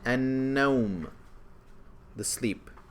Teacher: It went straight to the noon, and there's a shadda on the noon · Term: Solar